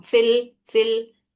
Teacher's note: फा को लाम से मिला देते हैं। ये बीच में जो दिख रहा है ये हमजा गिर जा रहा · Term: हमजतुल वस्ल